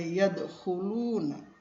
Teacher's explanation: Yadkhuluna itu cara bacanya kha di sini dengan pangkal tenggorokan